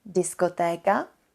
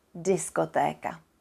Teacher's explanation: we don't say Diskoteka as if there was some softening we just say it without this softening effect